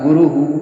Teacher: हाँ, ऐसे री के बाद आ गया तो ऐसे ही उसको हम मूर्धा कहते हैं। जिस स्वर के बाद विसर्ग आ जाता है, विसर्ग का वही स्थान हो जाता है।